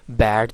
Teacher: जाहिर है, बैट जो है ए, ये हमें पता है एक लो फ्रंट वावल है। ठीक है, यानी इसमें टंग की पोजीशन जो है वो लो होती है और ये फ्रंट वावल भी है। फिर लिप्स इसमें स्प्रेड होते हैं।